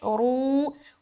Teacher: रा को मोटा रखते हुए वाव मद्दा